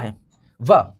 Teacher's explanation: दंत प्लस ओष से वायु स्पर्श करके जा रही है